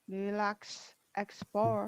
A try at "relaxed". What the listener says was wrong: D sound. Relaxed. Remember, this D sounds like T. Yeah, relaxed. Relaxed.